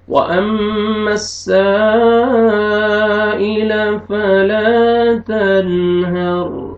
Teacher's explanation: रॉ जज़म से पहले ज़बर है तो आपने पुर करना है